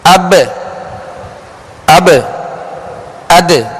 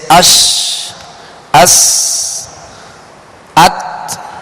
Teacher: قلقلہ کا معنی ہے جنبش، لوٹنا، اور حروف قلقلہ کو ادا کرتے ہوئے مخرج میں آواز لوٹتی ہے، لگ کر لوٹتی ہے۔